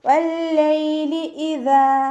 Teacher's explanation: ദാലിൻ്റെ കൂടെ അലിഫ് മദ് വന്നു 2 കൗണ്ട് നീട്ടിക്കൊടുക്കുക